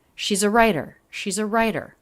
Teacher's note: schwa links right into the beginning sound of the next word which is an r